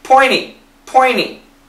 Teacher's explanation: the faster we say it, we can cancel the T. Pointy, pointy, no T at all.